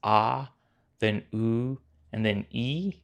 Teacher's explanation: with each one of these syllables you should feel your tongue moving from low middle to high positions in your mouth